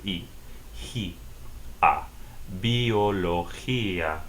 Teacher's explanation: g sounds like H when it's followed by an i and the stress goes on the I